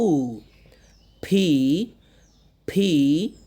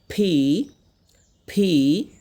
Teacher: ফি বলার সময় আপনার যে দুই ঠোঁট লাগিয়ে হালকা করে ধাক্কা দিবেন, ছোট করে ধাক্কা দিলে দেখবেন একটা বাতাস বের হচ্ছে